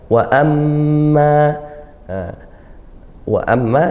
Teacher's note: mim bertasydid dibaca gunnah dengung